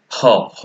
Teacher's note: জিভ, দাঁত, তাদের গোড়া এগুলো কোনো কিছুই দরকার হয়নি, কণ্ঠ থেকে উচ্চারিত হয়, এই জন্য এই ধ্বনিটাকে বলা হয় কণ্ঠমূলীয় ধ্বনি।